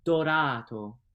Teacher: it's almost like a d but it has a little more friction than that